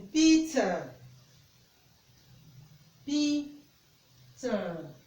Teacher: the front of the tongue is raised towards the roof of the mouth. The mouth is open and the lips are spread. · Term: vowel E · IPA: /i:/